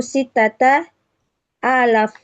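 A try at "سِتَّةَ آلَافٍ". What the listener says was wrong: Sitata alfa apa? Sitata alaf panjangin.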